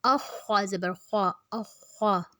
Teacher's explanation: خوا کو موٹا رکھنا ہے